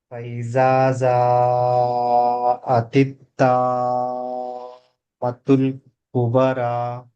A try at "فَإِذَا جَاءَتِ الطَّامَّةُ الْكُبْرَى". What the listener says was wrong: జీమ్ మీరు ఇన్ని రోజుల నుంచి చదువుతున్నాం కదా, జీమ్ శబ్దము కరెక్ట్గా రావాలి. నాలుక మధ్య భాగాన్ని మన నోటి పై కప్పుకు తగిలించి ఆ శబ్దం తీస్తే కరెక్ట్గా వస్తుంది. ఫఇజా జా జా ఫఇజా జాఅతి తామ్మతుల్ కుబరా.